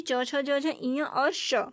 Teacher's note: तो च वर्ग के सभी, च, छ, ज, झ, इ और श, इनका उच्चारण स्थान जो होता है तालव्य होता है, जो कि तालु से टकरा करके उच्चारण होता है। श्वास वायु तालु से टकराती है तो तालव्य ध्वनि, तालव्य निकलती है। ये ध्वनियाँ च वर्ग और श।